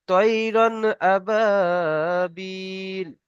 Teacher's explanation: র এর উপরে র এর উপরে তানবিন আছে, রকে পুর করে পড়তে হবে। রর ওপর তানবিন থাকলে র কে পুর করে পড়তে হয়